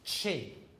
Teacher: The CH in chin is a combination of a plosive, a stop, plus a fricative. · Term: affricates